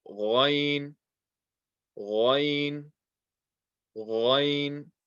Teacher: This is from the top of the throat, has the same makhraj as kha, and again, this is a heavy letter.